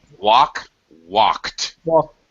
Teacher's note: t finished so like walk walked walk because there's no uh there's no voice to a k it's just breathing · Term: voiceless sounds